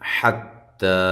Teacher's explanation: حا کو واضح کریں، تا کو باریک پڑھیں اور ایک الف کی مقدار کے برابر لمبا کریں